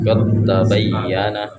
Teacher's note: Jadi cara membacanya huruf dalnya dimasuk di huruf ta. Jadi dal enggak terbaca lagi. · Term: Mutajanisain